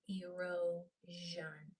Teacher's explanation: It's a vibrating SH sound.